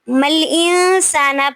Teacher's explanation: نون ساکن کے بعد سین آ رہا ہے تو یہاں پہ آواز کو ناک میں چھپائیں گے، اخفا کریں گے